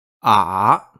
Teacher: the third tone is an inflection tone so it sounds like ah which sounds like a dip then a rise